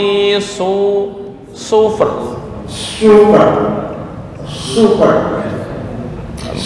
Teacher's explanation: kayak Sin Sin biasa cuma lidah naik ke atas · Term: makhraj Shad